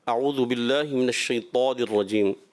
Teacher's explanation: طا موٹا بھی رکھنا ہے صفت استعلاء کے ساتھ اطباق کو بھی، اور پھر اس کے بعد جو را آ رہا ہے نا، اعوذ باللہ من الشیطان الرجیم، را کو پر کرنا ہے، تھوڑا سا پر نہیں ہوا اور ناک کی طرف جو ہے میلان رہا۔